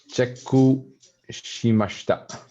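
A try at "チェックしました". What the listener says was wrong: Shimashita. Good. Okay. Excellent.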